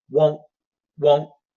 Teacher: I really think most Americans are gonna hit that oh not a diphthong · most Americans are going to hit that O, not a diphthong. We don't have to say won't, but they're still going to hit the first half, won't, won't, pretty strong.